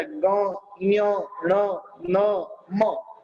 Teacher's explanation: तो इस प्रकार से वर्ण के उच्चार स्थान बताए और क वर्ग आदि के अंदर जो अंतिम अक्षर रहा हुआ था ग, ञ, ण, न, म, ये जो पांच है वो नासिका के माध्यम से यानी नाक के माध्यम से बोले जाने वाले शब्द है